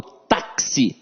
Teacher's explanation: Não, eu falo táxi. Então esse X aqui tem um som de KS.